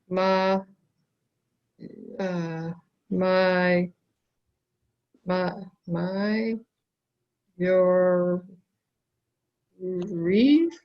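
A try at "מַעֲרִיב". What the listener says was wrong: take it one syllable at a time. So it's not my. No, it's ah. Ma'ariv.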